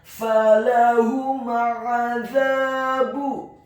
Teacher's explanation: Huruf mim yang sukun bertemu dengan huruf ain yang fathah. Hukum bacaannya adalah izhar syafawi, dibaca dengan jelas, tidak boleh dia gunnahkan huruf mim yang sukunnya.